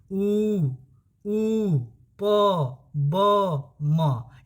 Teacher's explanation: यहाँ लिख दे रहे हैं ऊ प ब म, यानी ये जो है पूरा का पूरा दोनों ओठ का प्रयोग हो रहा है, किसी एक ओठ का प्रयोग नहीं हो रहा है, दोनों ओठ का प्रयोग हो रहा है। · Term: द्योष्ट